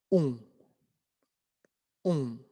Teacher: Entonces es una O, pero un poquito más cerrada.